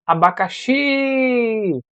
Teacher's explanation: viu que o X é a parte que eu passei mais tempo falando essa é a parte tônica é a mais forte